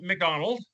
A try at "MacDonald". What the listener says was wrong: Could you please say it properly? It's MacDonald, not McDonald.